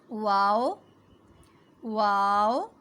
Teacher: ہونٹوں کو گول کرنا ہے اور منہ بند کیے بغیر ادا کرنا ہے